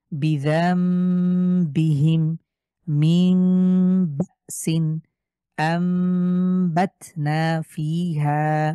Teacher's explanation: নুন সাকিনের পরে যদি বা থাকে অথবা তানভিনের পরে বা থাকে, তাহলে সেই নুন সাকিনকেই ছোট্ট মিম দ্বারা পরিবর্তন করব। তো এটা দেখা মাত্রই আপনারা বুঝে যাবেন যে এখানে ইকলাবের নিয়ম প্রযোজ্য হয়েছে।